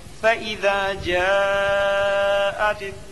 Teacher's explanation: مد متصل کو 3 الف 4 الف کے برابر کھینچ کر پڑھیں